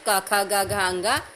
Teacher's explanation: क वर्ग में क ख ग घ अंगा, उच्चारण स्थान कंठ